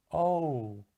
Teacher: if you listen closely you can hear it starts with ah and it ends with o · it starts on one vowel sound and then it glides into a second vowel sound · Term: diphthongs